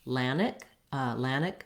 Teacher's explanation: in the first syllable at atlantic and then same thing where we might omit that tea and say just more of a lannick atlantic rather than atlantic